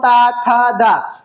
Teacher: दांतों में स्पर्श हो रहा है। जब तुम्हारे जीभ का अगला भाग दांतों में स्पर्श होगा तो वहां पर दंत या दंती कहलाएगा